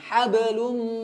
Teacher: ada gunnah ya, ditahan ya, dipanjangkan ya, dipanjangkan kemudian masuk ke hidung.